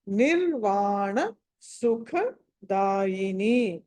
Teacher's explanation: సుఖ అన్నది మహా ప్రాణం